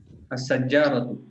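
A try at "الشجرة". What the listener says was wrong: Ya, asyajaratu, tidak pakai tasdid.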